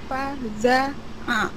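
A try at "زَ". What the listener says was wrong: Kurang desis. Za. Fa-nya juga berdesis. Fa za.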